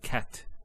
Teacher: So the T doesn't have any vowel associated with it. It's actually just a stop on the T. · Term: sukoon